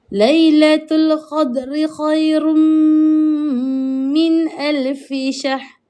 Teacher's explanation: Ayat yang ketiga ada, iaitu bila mana tanwin bertemu huruf mim dan kita kena memasukkan bunyi mim itu ke dalam tanwin · Ada lagi ni yang mana nampak nun mati bertemu huruf hamzah. Nun mati bertemu huruf hamzah ataupun alif hukumnya adalah izhar halqi. Dekat sini kita tak boleh dengung. Yang dengung dekat khairum sahaja min kena jelas. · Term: idgham bi gunnah